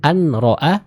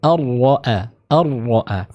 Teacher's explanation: sebab idgham adalah makhraj yang berdekatan ya. Karena makhraj dari huruf nun dan ra ini berdekatan, maka bacaannya diidghamkan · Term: idgham bila gunnah